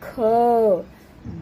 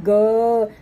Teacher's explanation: क देर तक बोलेंगे तो अ की ध्वनि आ रही है